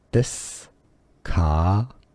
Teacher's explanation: The stress is on the ka syllable.